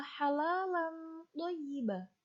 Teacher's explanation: Tanwin bertemu dengan to, bacaan ikhfa hakiki. Ikhfa hakiki adalah artinya menyamarkan.